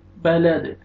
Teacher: بهذا البلد، وقف کریں گے سٹاپ کی صورت میں، دال ساکن ہو جائے گا، لام فتحہ دال سکون لد، اور دال قلقلہ میں سے ہے، حروف قلقلہ میں سے ڈبل ساؤنڈ آئے گا، بلد۔ لا اقسم بهذا البلد وأنت حل بهذا البلد، وأنت نون ساکن کے بعد حروف اخفاء میں سے تا ہے، یہاں پہ آپ نے اخفاء کرنا ہے، نوز میں ساؤنڈ لے کے جائیں گے۔